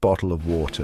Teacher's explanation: notice how the tea almost disappears